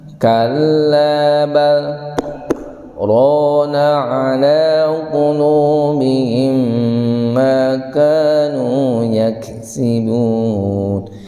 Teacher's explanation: Berhenti sejenak selama 2 harokat ya, 2 ketukan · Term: sakta